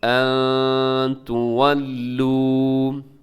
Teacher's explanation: نون ساکن ہے اور نون ساکن کی بعد تا ہے تو یہاں پر اخفا کیجیے گا، ان تولو۔ اس کو اپنے لمبا تھوڑا سا کرنا کیونکہ آخر میں واو ساکن سے پہلے پیش ہے تو واو مدہ ہے، لمبا کیجیے گا۔